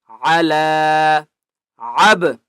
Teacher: عین کی آواز حلق سے نکالنی ہے اور لام کو ایک الف کی مقدار کھینچ کر پڑھیں گے۔